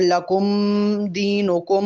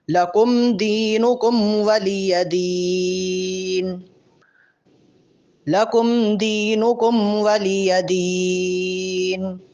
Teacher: لکم اور دینکم پر میم ظاہر کریں گے لیکن لمبا غنہ نہیں ہوگا. اگر لکم دینکم ایسے پڑھیں گے تو یہ غلط ہوگا، ان دونوں میم پر غنہ نہیں ہے.